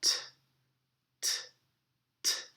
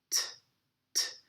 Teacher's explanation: It's a very open T sound, t, t, t, in which the air comes straight from your lungs and your tongue just flaps a little bit against your teeth, t, t, letting all the air go out. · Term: American T